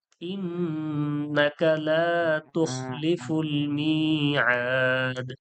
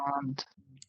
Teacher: ইন্নাকা লা তুখলিফুল মিআদ, মাদ্দে আরজি হলো। মাদ্দে আরজি হলো হরুফে মাদ্দার পরে সাকিন করার ক্ষেত্রে 3 আলিফ টেনে ছাড়তে হবে